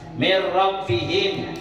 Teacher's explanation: Nun mati ketemu dengan huruf ra. Jadikan ra. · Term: idgham